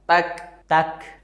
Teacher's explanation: tertahan tapi juga enggak terlalu ngalir ta ta nah yang ini Kaf sukun suaranya tertahan dan ada hembusan udara